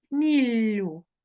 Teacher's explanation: подовжений приголосний л закінчення ю